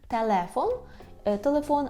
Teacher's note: «л» повинно бути м'яке, «телефон», так, кінчик язика до верхнього піднебіння